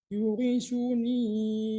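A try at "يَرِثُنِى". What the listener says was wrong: Yari Pak, bukan yu.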